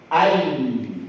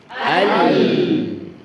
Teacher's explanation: Ya, ketika mengucapkan huruf lam. Lam diucapkan dengan memperjelas sifat jahar.